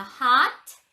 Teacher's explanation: O는 아 발음을 하셔야 돼요.